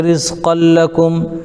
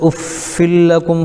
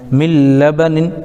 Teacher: ادغام تو ہوگا لیکن اس میں غنہ نہیں ہوگا. اسی طریقے سے رزقا لکم، قاف کے اوپر دو زبر کی تنوین ہے، تنوین کے بعد حروف یرملون میں سے لام آ گیا، ادغام ہو گیا لیکن یہاں پر غنہ نہیں ہوگا. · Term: ادغام بلا غنہ